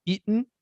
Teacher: It's called a glottal stop because you're stopping the air.